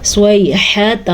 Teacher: ہا کے تلفظ کا دھیان رکھنا ہے کیونکہ ہا ہے, ہا بھی نہیں ہے اور خا بھی نہیں ہے